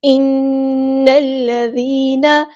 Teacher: نون کو ہم نے لام کے ساتھ ملا دینا ہے، حمزۃ الوصل ہمارا ڈراپ ہو جائے گا، ذال کو باریک نرمی سے ادا کرنا ہے۔